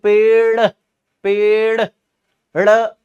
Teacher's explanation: झटके से नीचे नहीं आई लेकिन जब हम बोलेंगे पेड़ पेड़ जीभ ऊपर गई और फिर तुरंत नीचे आई है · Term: उत्क्षिप्त व्यंजन